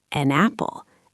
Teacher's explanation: We do not say an, pause, apple. We say an apple as if it were one single word. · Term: linking